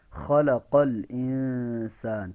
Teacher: تو یہ خلقہ موٹے قاف کے ساتھ ہے، اس کو ہا نہیں پڑھنا